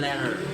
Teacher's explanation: bunyi T dalam letter sering diucapkan sebagai flap atau R di Amerika